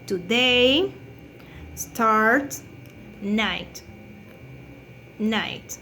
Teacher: this consonant is voiceless because we don't have vibration, The place of articulation is lingual velar because the sound is produced by the tongue and the upper alveolar ridge, The manner of articulation is stop to.